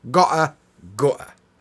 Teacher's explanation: We get the same glottal stop in gutter as we do in gotta.